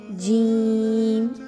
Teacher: جیم کی ادائیگی کس طریقے سے ہوگی کہ زبان کی جو آپ کے سینٹر پارٹ ہے وہ اوپر کے تالو کے درمیانی حصے سے لگے گا